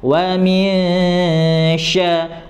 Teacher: nun mati bertemu dengan huruf sya, maka dibaca dengung. Cara dengungnya ya, didengung terlebih dahulu, kemudian diarahkan ke huruf sya.